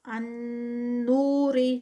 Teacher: واو سے پہلے پیش ہے تو یہ واو مد ہے اور اس کو ہم 2 کاؤنٹس کا اسٹریچ کریں گے وداؤٹ سٹاپ